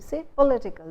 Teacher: The stresses shift from pol to it.